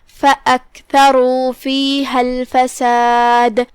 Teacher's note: کلمت الفساد میں آخری میں ہم دال پہ رکیں گے تو اسے ہلاتے ہوئے یہ کلمہ کو ادا کریں گے